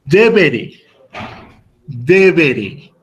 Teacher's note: haciendo énfasis en la penúltima sílaba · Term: acento en la penúltima sílaba